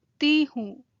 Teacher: You don't need to pronounce the N. It's just a nasalization sound at the end of the word, like in main.